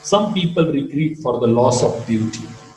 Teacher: Beauty is to be marked with a falling rising.